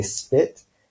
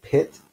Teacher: so we'll look more at that in future weeks but basically the P sound in spit does not have a little puff of air after the P that the P sound and pit does happen to have so if you kind of hold your hand in front of